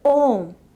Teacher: When this letter O occurs initially, it is often pronounced with a glide resembling Va. Before fully forming the vowel O, for example, in words like Om, the lips round and move from a V-like position into the sound sometimes called diphthongal glide.